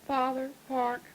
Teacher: you've got about a half retraction. In other words, your R is about half pronounced